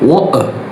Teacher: In British media, you will often hear a different variation, where the T isn't a D sound, but a glottal stop, like water, like a stop. The speaker closes their vocal folds completely to stop the air.